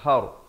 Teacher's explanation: Tan izhar halqi, har ra dibaca tebal